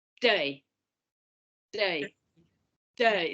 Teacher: So the T is almost not there at all.